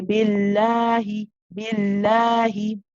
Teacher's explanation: We actually always read it with a small mud after the lam. We actually say billahi. We stretch the lam, right? · But we never recite it exactly how it appears, okay? We actually always read it with a small mud after the lam.